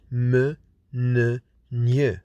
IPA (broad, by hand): m, n, ŋ